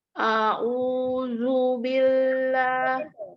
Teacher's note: A-nya tidak dipanjangkan, yang panjang u. Jadi bukan a'udzu ya, u-nya yang panjang.